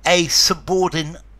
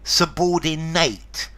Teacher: A subordinate, there's a schwa at the end.